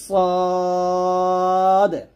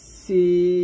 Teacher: এখানে সদ এবং সিনের মাখরাজ যদিও এক, তবে এখানে সদটা মোটো হবে, সদ কি হবে, মোটো হবে, আর সিন হবে পাতলা। অর্থাৎ সদ যখন উচ্চারণ করবেন মুখটা ভরে যাবে, মুখটা ভরে উচ্চারণ করতে হবে সদ, আর সিনটা পাতলা করে উচ্চারণ করতে হবে সিন